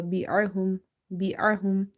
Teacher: Ain again from the middle of the throat.